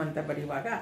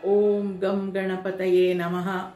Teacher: ಗಮ್ ಅಂತ ಬರೆಯುವಾಗ ಅದು ಆ ಶಬ್ದ ಮೂಗಿನಿಂದ ಬರುತ್ತೆ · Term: ಅನುಸ್ವಾರ